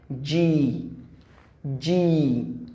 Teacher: জিহ্বার middle ভাগ থেকে সামনে যে অংশটুকু আছে সেটা কি উপরের যে প্যালাট আছে সেই প্যালাটে লাগে, তালুতে লেগে এটা শক্ত করে উচ্চারিত হয় জি, জি, ওকে, জি।